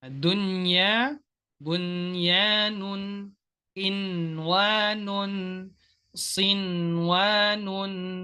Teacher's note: maka dibaca dengan tawassut pada nunnya. Jadi nggak dibaca dengan dengung.